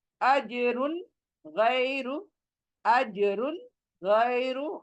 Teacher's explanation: ये रु क्लियर पढ़ना है अब नाक में नहीं लेकर जाना है वेरी क्लियर इसके रूल को बोलते हैं इजहार करना यह तनवीन को क्लियर